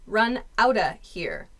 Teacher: This out of becomes outa.